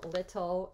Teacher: right then we're going to turn this consonant into a flap we're going to turn tu into a flap sound